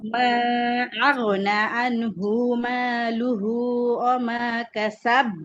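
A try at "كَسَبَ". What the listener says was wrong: না, কাসাব এখানে আবার শক্ত হবে না আপু। এখানে কেন শক্ত হবে না? মানে এখানে তাসদিদ নাই, এজন্য শক্ত হবে না।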